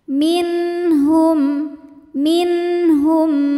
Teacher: bukan mim bukan juga huruf ba ya selain mim dan ba maka mimnya tetap dibunyikan dengan bunyi asalnya yaitu m ya dan tidak perlu ditahan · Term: idhar syafawi